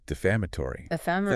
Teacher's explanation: The stress on the second syllable. 5 syllables.